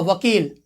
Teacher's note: व का जो प्रोनाउंसिएशन होता है वो आपका दंतोष्ठ में होता है। एक ऐसा ये वर्ण है जिसका केवल और केवल ये प्रोनाउंसिएशन दंतोष्ठ में होता है।